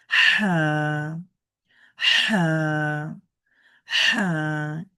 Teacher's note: আমাদের গলার মাঝখান থেকে উচ্চারণ করতে হবে এটিকে বাংলায় বলে কন্ঠনালী আরবিতে বলে হালক মানে আমাদের যে আমরা স্বাভাবিকভাবে আমরা বলে থাকি যে গলার মাঝখানে আসলে কন্ঠনালীর মাঝ মাখান থেকে অথবা হালকের মাঝখান থেকে একটু সোশো আওয়াজ করে পড়তে হবে।